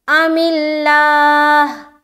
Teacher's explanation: लफ्ज़ अल्लाह का लाम बारीक रखेंगे और हा के ऊपर जब हम स्टॉप करेंगे तो हा का पेश हटाकर सुकून लगाएंगे और हा को प्रॉपर अदा करना है।